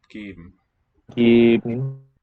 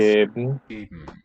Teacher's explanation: But then after the B comes just a syllabic M.